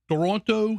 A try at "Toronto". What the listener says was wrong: you're not supposed to uh over emphasize over emphasize the second T in Toronto